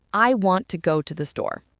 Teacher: In our sentence, the stressed content words are want, go, store. The remaining words, I, to, the, are function words. They are not stressed. Instead, they are said quickly and lightly between the strong beats. So when we speak naturally, the sentence doesn't sound like each word is equal. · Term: sentence stress